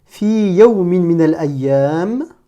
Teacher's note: je marque la pause, donc je ne prononce pas le mi et je vais dire Fi yawmin min al-ayyam.